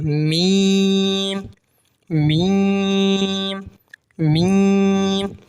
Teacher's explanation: मीम दोनों होठों के खुश्क हिस्से से अदा होता है यानी दोनों होठों को मिलाना लेकिन सामने वाला जो होटो का